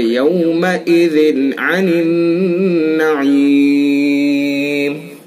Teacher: یہ ذال کے نیچے تنوین ہے اور تنوین کے بعد یہ عین ہے حروف حلقی میں سے، تو اس لیے اس کے اندر اظہار کریں گے، اس میں غنہ نہیں کریں گے، جلدی سے پڑھیں گے.